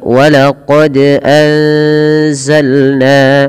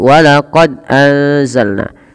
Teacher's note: Kita lihat teman-teman pada lafal walaqad anzalna. Pada lafal huruf dal yang dia berharakat sukun, ini wajib kita pantulkan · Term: qalqalah